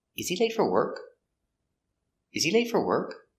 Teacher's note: So this question, the intonation goes up at the end.